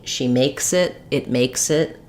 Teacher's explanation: my my S sound will link to the next word